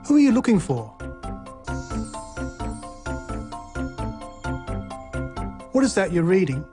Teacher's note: Questions with who, what, when, why, and how also use this low or falling tone.